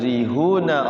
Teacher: ra-nya dibaca tipis tarqiq